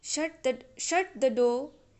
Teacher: But actually, the rule is while giving commands, you should use falling tone, and you have to say in this way, like shut the door. Here the tone is falling, not rising.